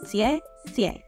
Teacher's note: It's pronounced as 谢 谢, with a falling tone on both syllables.